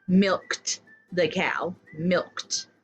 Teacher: when you see Ed the suffix ed you're going to make the T sound